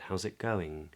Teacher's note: notice that I don't say the T in the word it instead what I do is I prepare for the G of the word going and I do that by bringing the back of my tongue · I don't pronounce the G at the end